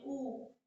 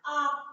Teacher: ये पश्च स्वर है, ये गुरु स्वर है, आवर्तुल स्वर है, आवर्तुल, आवर्तुल स्वर है, आवृत्तामुखी है, क्योंकि जब हम आ बोलते हैं आ, तो हमारा ओठ फैल जा रहा है, ना कि वृत्त के आकार में गोल हो जा रहा है। जैसे जब हम ऊ बोलते हैं ऊ, तो हमारा ओठ वृत्त के आकार में गोल हो जाता है, लेकिन जब हम आ को उच्चारण कर रहे हैं आ, तो हमारा ओठ फैल जा रहा है, इसलिए ये आवृत्तामुखी है।